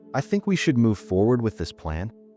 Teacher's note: The first is the upward inflection on declarative statements. Ending a statement with a rising tone. The intonation of a question applied to something that isn't one.